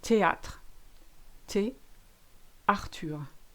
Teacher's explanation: TH is always te. Remember, you ignore your H's.